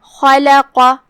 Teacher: تو ہم خا کو تفخیم سے پڑھیں گے لیکن لام کو ترقیق سے کیونکہ لام کا حکم ہے ترقیق، اور اس کے بعد قاف کو پھر سے تفخیم سے.